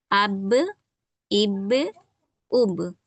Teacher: با ہمارا حروف قلقلہ میں سے بھی ہے، اس کو ہلکا سا جھٹکا بھی دیتے ہیں ہم لوگ